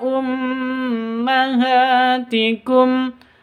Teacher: karena ghunah musyaddadah tuudzohiruna minhunna ummahatikum mim tasydid di sini ya mim tasydid berdiri sendiri sama dengan Nun tasydid ghunnah musyaddadah dengung dua ketuk atau dua harakat